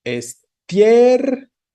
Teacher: Entonces, la fuerza va sobre la E. Por eso sabemos que es diptongo porque tenemos I cerrada más E abierta. Y la abierta es la tónica.